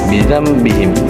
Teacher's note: Mim sukun dilafazkan samar menjadi gunnah dan ditahan 3 harokat. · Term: ikhfa syafawi